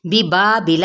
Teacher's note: یہاں پہ مد اصلی بالالف، بلا کی حرکات کو لمبا نہیں کریں گے